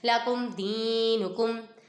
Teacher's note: یہاں پہ میم سکن کے بعد دال آ رہا ہے، یہاں پر اظہار شفیع ہوگا، ادھر گنہ نہیں کریں گے